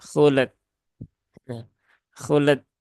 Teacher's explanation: berarti dia lamnya yang mantul ya lamnya yang ada qalqalahnya padahal lam tidak ada Qalqalah dan qalqalahnya itu justru ada di